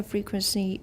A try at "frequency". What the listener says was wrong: Frequency. Watch the N. Everyone, frequency. In Taiwan English, you often just leave a nasalized vowel there. You have to watch and listen to get this. Taiwan English will often have frequency. No N. Just a nasalized vowel. Frequency should be frequency. Frequency.